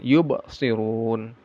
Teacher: Yub qalqalah ya dipantulkan